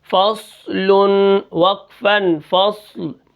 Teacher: صاد کو ہم موٹا بھی کریں گے اور صاد کے اوپر جزم ہے تو ہم اس کو بالکل ساکن کر کے پڑھیں گے